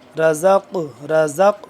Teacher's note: را موٹا، زا سختی سے پڑھیں گے، اور پھر قاف پڑھیں گے موٹا، پلس جب قاف کے ساتھ زا ملے گا تو قاف قلقلہ بھی ہوگا اور قاف موٹا بھی ہوگا۔